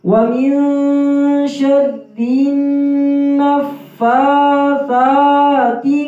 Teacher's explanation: فا کے پر کھڑی زبر ہے، اس کو ایک الف کی مقدار لمبا بھی کریں گے